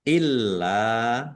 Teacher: lamnya ada tasdidnya dibaca dobel ditekan dan ditahan. Biar tampak dobel.